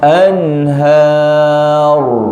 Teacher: Sebut ha dulu, jangan hor, anhar bukan anhar, lepas tu baru tebal.